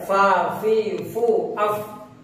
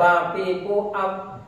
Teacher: Supaya tidak seperti P, maka angin keluarnya itu harus banyak.